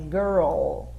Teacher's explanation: a ponta da língua vai lá atrás dos dentes superiores, lá no cantinho, né, na pontinha aqui do céu da boca, que é onde é pronunciado o som do L aqui em inglês, tá?